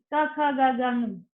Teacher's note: so this comes from the back of the throat, they are called as throat